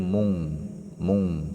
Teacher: nun sukun bertemu Kaf ya Nun bertemu Kaf ya kan maka Nun sukunnya dibaca ikhfa mung asalnya Mun menjadi Mung